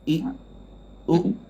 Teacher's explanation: Tak ada angin, tak ada qalqalah huruf hamzah ni. Dia melekat terus. I, u. Ringan.